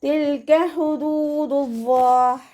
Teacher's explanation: തിൽക ഹുദൂദുല്ലാഹ്. ഹ എന്നുള്ള അക്ഷരത്തിൻ്റെ സൗണ്ടിനെ തൊണ്ടയുടെ മധ്യഭാഗത്ത് തന്നെ കൊണ്ടുവരിക. ഹ എന്നുള്ള അക്ഷരത്തിൻ്റെ സൗണ്ടായി പോകരുത് കേട്ടോ.